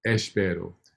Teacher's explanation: with the open mouth E, it has the E sound, espero, and you can tell because your mouth is wide open. The mid E is the second E of espero.